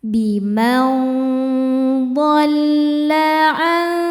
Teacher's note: Selanjutnya ada hukum ikhfa hakiki ausat karena nun sukun bertemu dengan huruf d. Cara baca nun sukunnya ini adalah disamarkan menuju huruf d disertai dengung. Dengung dan samarnya sama besar. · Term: ikhfa hakiki awsat